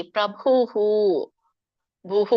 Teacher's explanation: ಭಕ್ಕೆ ಊ ಸ್ವರ ಕೂಡಿದೆ, ಹಾಗಾಗಿ ವಿಸರ್ಗ ಕೂಡ ಊ ಅಂತ ಹೇಳ್ಬೇಕು. ಭೂಹು ಹೂ ಅಂತ ಹೇಳ್ಬೇಕು.